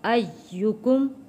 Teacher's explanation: یا کے اوپر تشدید ہے، سختی کے ساتھ تھوڑا رک کر ادا کرنا ہے۔